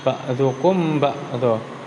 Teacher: Di sini ada cara membacanya, yaitu apabila mim bertemu dengan ba, maka suara mim tersebut harus dibaca samar. Antara mim dan ba ditahan kira-kira 2 ketukan. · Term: ikhfa safawi